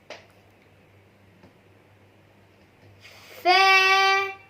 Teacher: فے اس کو کم لمبا کرنا ہے، اس کو ایک الف کی مقدار لمبا کرنا ہے